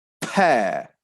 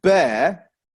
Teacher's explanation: the per sound is made using an expulsion of breath from the mouth as we close our lips the air is exposed from our mouths so has that effect